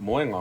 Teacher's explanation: you emphasize moe, but then when you add the nga, it's adding another syllable.